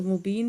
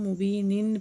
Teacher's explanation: اگر ہم وقف کریں گے تو مبین پڑھیں گے، اور اگر وقف نہیں کریں گے تو یہاں پہ ہم مبینن پڑھیں گے